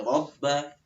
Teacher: rabba itu naik lagi ya, ada tasdid. Suaranya ditekan.